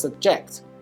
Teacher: When used as a verb, this word is pronounced subject, with stress falling on the second syllable.